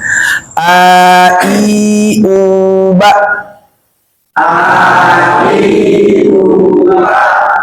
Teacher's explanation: U monyong. Jadi nanti ketika fathah dibuka, ketika kasrah turunkan rahangnya sedikit, dhammah dalam keadaan bibir dimonyongkan